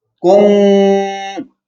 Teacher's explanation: نہیں یہ پڑھی جا رہی ہے، پڑھی ہاں اس میم کے کو اس میم کے اندر ضم کر کے پھر غنہ پیدا ہو رہا ہے. پہلی میم دوسری میم میں ضم ہو کے پھر غنہ پیدا ہو رہا ہے